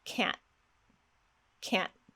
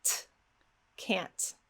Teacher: What I'm doing is called a glottal stop. I'm actually stopping the air very sharply in my throat.